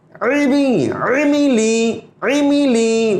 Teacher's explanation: عین کی آواز ہم نے بتایا تھا گلے کے درمیان سے نکلنے والی آواز ہے